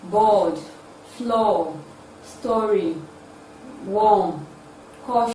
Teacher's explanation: it is a back open tense rounded sound